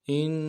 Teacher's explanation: حمزہ کو نون ساکن کے ساتھ ملانا ہے، نون ساکن میں غنہ کریں گے